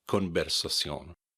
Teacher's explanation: In Spanish, the V sound can also be kind of a soft B